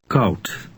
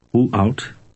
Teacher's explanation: Remember that D at the end of a Dutch word resembles a T sound.